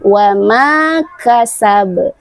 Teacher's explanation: Setelah huruf mim ada huruf alif, maka mimnya dibaca panjang 2 harokat